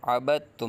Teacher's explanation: جی، آگے جو ہے وہ بات بتائی جا رہی ہے کہ پہلا حرف متحرک، دوسرا حرف ساکن اور تیسرا حرف مشدد ہو تو اکثر مرتبہ ہمیشہ نہیں ساکن حرف کو چھوڑ دیں گے اور متحرک حرف کو مشدد حرف کے ساتھ ملا کر پڑھیں گے